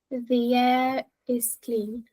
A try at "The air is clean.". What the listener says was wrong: It's good, but you stop, you see, when the air is clean. Now, you can do that. It's not wrong to do that. The air is clean. But look, the air is clean. It doesn't sound as good as the air is clean.